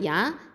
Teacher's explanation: யாங்கிறது வசத்துல் லிசான், இது நடு நாவு எழுத்து